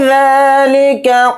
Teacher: ذال کے اوپر کھڑا زبر ہے، ذال کو تھوڑا کھینچ کر پڑھیں گے